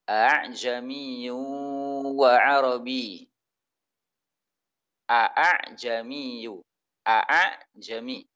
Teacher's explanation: Dia mempermudah bacaan hamzah hingga menyerupai alif. · Ini pada kalimat a'jami, ini dalam riwayat Hafs, hamzah yang kedua dibaca dengan tashil